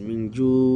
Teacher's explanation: জু থেমেছেন আজি সুকুন হিসেবে, 2 থেকে 3 আলি পরিমাণ টেনেছেন, মিং জু। আর না থামলে মিং জু মদ তাবাই হিসেবে থাকবে, অসাকিন ডানে পেশ।